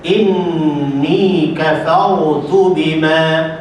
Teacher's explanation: Inni ada dengung, kafar ra dia baca tebal, tu bima dia baca elok